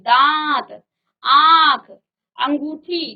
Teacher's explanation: मुख और नाक दोनों से आपकी वायु बाहर निकलेगी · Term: अनुनासिक